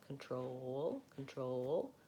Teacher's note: So control, the stress is on the second syllable. So kun is short and troll is long, and this is vowel schwa.